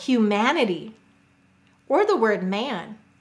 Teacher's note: in those words the syllable man is stressed